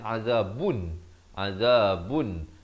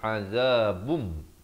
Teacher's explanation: Azabum, di sini masuk beserta dengung. Asalnya azabun, azabun, tapi datang mim jadi azabum. Jangan lupa dengung 2 harakat.